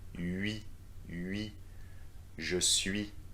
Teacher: Here the difficulty is to switch from the U sound to the E sound, from a round shape of your lips to a full stretch.